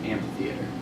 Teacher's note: So we drop in pronunciation the H and we just pronounce it amphitheater. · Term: deaspirate